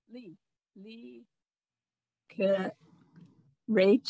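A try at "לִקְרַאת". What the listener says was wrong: This is a blend. Leek rot. You see an olive, but it's a silent, so you don't hear it. And you have to hear that tov at the end. Leek rot.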